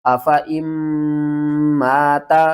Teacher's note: میم مشدد ہے تو اس کے اوپر غنہ بھی کریں گے۔ الف سے پہلے زبر ہے، حروف مدہ ایک الف کے برابر کھینچ کر پڑھنا ہے۔